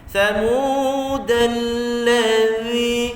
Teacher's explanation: harfu dzal hujung lidah sentuh hujung gigi atas sama macam sa.